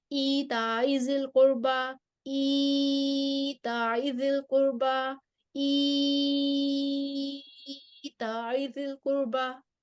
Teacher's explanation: हमने ई को अब हमने 3 मद्दें देनी है, कसर भी करनी है, तवस्सुत भी देनी है, तूल भी देना है।